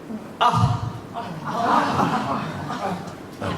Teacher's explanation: the last vowel that we are learning is an aspirated sound which throws a lot of air from the mouth.